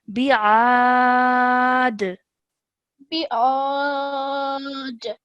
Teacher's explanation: we're ending on a dal with a sukoon. So that means that the rule of qalqala would be applied over here. So slight jerk sound at the end.